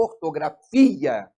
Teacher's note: Por exemplo, ortografia. O fi é a sílaba forte, mas ele não tem acento. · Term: sílaba tônica